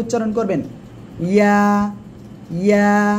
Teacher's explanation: জিহ্বার মাঝখান, তার বরাবর উপরে তালুর সাথে লাগাবেন, লাগিয়ে উচ্চারণ করবেন